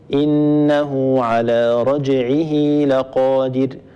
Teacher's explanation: على انه على رجعه لقادر ايضا رجعه في اخرها هاء كنايه سبقت بكسره العين وبعدها فتحه اللام فهي وقعت بين حرفين متحركين وتحقق فيها الشرط اذا نصلها بياء اللفظيه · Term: مد الصله